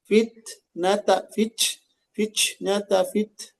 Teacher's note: Yang dijaga itu bukan hamesnya, tapi syiddahnya.